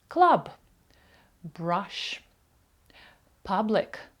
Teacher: голосна буква ю в закритих складах вона буде читатися як коротке а дашок